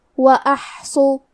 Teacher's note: کلمت وأحصوا میں حرف الحا کی ادائیگی حلق کے درمیان والے حصے سے ہے · حرف الصاد حروف التفخیم میں سے ہے تو ہمیں صاد کو بھاری آواز میں پڑھنا ہے. کیونکہ اس پہ پیش ہے تو ہم صاد کو پیش سے پڑھیں گے.